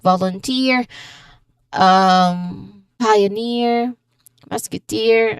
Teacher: Again, the rule for ear, we stress on the final syllable. So, we stress on ear.